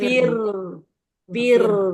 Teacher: kalau ro sukun sebelumnya kasroh itu dibaca tipis ronya